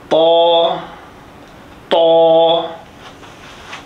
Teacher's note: یہ اندر والے حصے کی جڑ کے ساتھ جگہ کے لگے، اوپر والے دو بڑے دانتوں کی جڑ میں، اور ساتھ موٹا کرنا